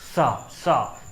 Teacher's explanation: जब भी आप इन सा का उच्चारण करते हैं तो अचानक से वायु आपकी ज़्यादा मुंह से निकल के आती है, इसलिए ये सा सा सा क्या हो गया, आपके महाप्राण हो गए।